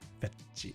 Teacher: because there's no like t sound in Japanese, it's like chi. It becomes chi.